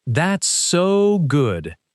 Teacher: stretching the word so to show excitement